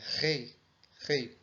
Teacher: ele possui o som de um R levemente aspirado, né? Um R do H americano, né?